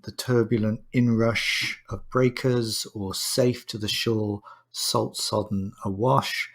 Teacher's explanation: with sibilants used to mimic the sea sounds